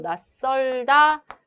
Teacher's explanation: 낯설다의 경우에 치읓은 대표음 디귿으로 발음이 되고 낯설다 이렇게 발음이 되겠죠. 자, 지금 여기에서 치읓이 영향을 주어서 시옷이 된 소리로 발음이 된 것을 볼 수가 있겠습니다